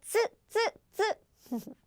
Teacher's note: So it should be so hard. it should be a tense and hard sounds. Like stop your breath slightly and burst this z sound.